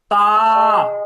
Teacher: দেখেন মাখরাজ একটা জিনিস দেখেন, একটু খেয়াল করেন, এই যে আমরা যখন তা বলতেছি, অটোমেটিক দেখবেন আমাদের জিহ্বাটা দাঁতের গোড়ায় চলে যাচ্ছে। দেখেন তা, একটু উচ্চারণ করেন তো, একটু উচ্চারণ করেন, দেখেন তা, দেখেন জিহ্বাটা অটোমেটিক দাঁতের গোড়ায় চলে যাচ্ছে।